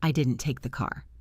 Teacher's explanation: Everyone thinks you took the car, but you didn't. You would stress didn't